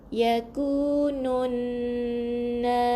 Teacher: Nun yang kedua, kita tengok kalau di sini baris atas lah. Jadi bila ada double N, kita kena dengung 2 harakat. Yakunun na, lembutkan, bukan na tebal, na, buka mulut sebab baris atas kena buka mulut. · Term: Wajibul gunnah